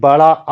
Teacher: बड़ा आ में सबसे ज्यादा मुंह खुलता है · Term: विवृत